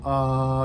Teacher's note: you can feel the the vocal folds are already on for that